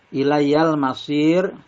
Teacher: alif lam bertemu dengan huruf mim. Bacanya jelas suara lamnya. Ilayyal masir, masir ini mad arid li sukun dibaca panjang boleh 2, 4 atau 6. · ro-nya ini dibaca tarkik atau tipis karena ro-nya kalau wakof berarti ro-nya itu mati sukun dan sebelumnya berharokat ada ya sukun atau panjang dan sebelumnya berharokat kasroh. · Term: alif lam komariah